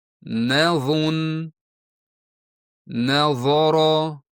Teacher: U yo'g'on talaffuzli harf, lekin nun esa ingichka talaffuzli harf va doim shunday bo'lib qoladi. Uni qalin qilish mumkin emas.